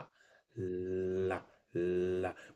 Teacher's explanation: ला में जब ला बोलते हैं तो हवा अगल बगल से निकलना शुरू हो जाती है · अच्छा, ला बोलते समय ना ध्वनि बोलने लगते हैं, और जब जीभ नीचे करते हैं तो ला कंप्लीट होता है, मतलब ला का लंबा उच्चारण, ला ला ला, मतलब कि ऊपर डीप टच रहती है, ध्वनि अगल बगल से निकलने लगी, पार्श्व से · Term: पार्श्विक व्यंजन